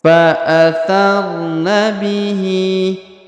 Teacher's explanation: Huruf Hi dipanjangkan dua harakat karena terdapat Alif kecil di bawahnya